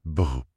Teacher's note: C'est faire vibrer les lèvres. Un peu comme un cheval fait le son br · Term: lip trills